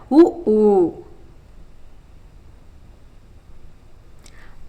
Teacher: இதழ்களை குவிப்பதால் பிறக்கும் உயிரெழுத்துக்கள்